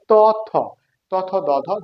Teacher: আমাদের এই জিহ্বাটা উপর পাটি দাঁতের গোড়ার সাথে স্পর্শ করে, এই জন্য এটা হচ্ছে দন্ত বর্ণ, দন্ত ধ্বনি